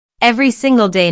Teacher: emphasized every single day notice that each word here is stressed the speaker wants to make a point so she emphasizes each word equally